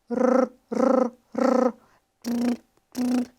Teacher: nós temos várias oclusões, múltiplas oclusões, porém muito rápidas no trato vocal pela ponta da língua ou então pela úvula. aquela estrutura que nós também conhecemos como campainha, que fica na parte posterior do nosso trato vocal, bem pertinho ali do palato mole. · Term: vibrante